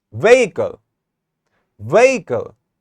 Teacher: I'm just focusing and stressing on the first syllable, ve, and I'm not stressing on this part. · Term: primary stress